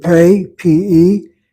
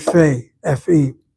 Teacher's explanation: And if so, it's called a fay. The pay letter is bilabial. The fay letter is labial dental. And that pay letter sounds like the Hebrew word for P.